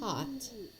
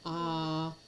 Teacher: Ah is probably the most open of the vowel sounds with pretty much no lip rounding. When you're going ah your lips are very open. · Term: A vowel sound